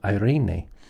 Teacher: Notice the accent on the second syllable.